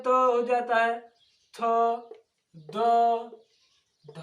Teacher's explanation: दोनों दांतों के बीच से ध्वनि निकलती है